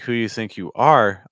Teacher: But if you have a sentence like who you think you are, I'm stressing the word are. And so that means I have so many words that aren't stressed, right?